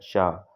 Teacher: का जो पिछला भाग होता है वहां से बोला जाता है अघोष अल्प प्राण में आता है च